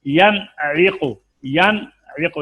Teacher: نون کو اپنے مخرج سے بغیر غنہ زمانی کے، یعنی ایک الف کی مقدار میں غنہ پھر نہیں کرنا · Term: اظہار حلقی